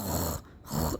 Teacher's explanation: खराटे की आवाज अगर आप हलक से निकालेंगे तो ये ख की अदागी सही आ जाएगी